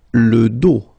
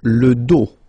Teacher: Final S not pronounced, okay? Le dos.